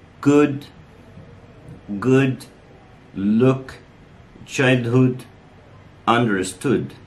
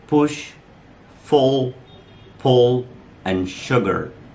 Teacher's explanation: In pronouncing this sound, the lips are very slightly rounded, like that. The tongue is relaxed, and the back of the tongue is raised, higher than for O. So you have to raise your back of the tongue. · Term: As in good